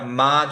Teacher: সো মখরাজ এটার কোথায় আমরা মা যখন বলি, যখন বলি, যে মখরাজটা এক্স্যাক্টলি সেম মখরাজ অ্যারাবিকেও, কোনো মখরাজের চেঞ্জ নেই। দ্যাট ইজ হচ্ছে যে লিপ থেকে উচ্চারণ হয়, 2টা লিপ একসাথে করে আমরা মিম উচ্চারণ করব, মা উচ্চারণ করব। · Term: লিপ লেটার